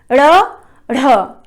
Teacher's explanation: ये उत्क्षिप्त ध्वनियां हैं क्योंकि जीभ को हम तेजी से पीछे फेंकते हैं इनके उच्चारण में।